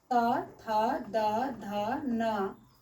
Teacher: दांत से हमारा ल, दंती स और त वर्ग त, थ, द, ध, न का उच्चारण स्थान दांत से होता है, इसे हम दंत वर्ण कहते हैं।